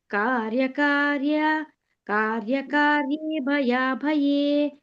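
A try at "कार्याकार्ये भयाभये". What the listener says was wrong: ಕಾರ್ಯ ಅಂತ ದೀರ್ಘ ಕೊಡಬೇಕು ಅಲ್ಲಿ ಕಾರ್ಯ ಅಕಾರ್ಯ ಎರಡಿದೆ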